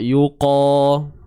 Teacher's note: Angkat bunyi huruf qaf tu sebab dia bersifat tebal.